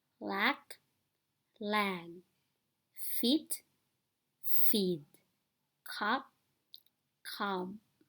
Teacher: that the vowel sounds are the same in each pair however the vowels in the words on the left are shorter than their counterparts on the right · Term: vowel length rule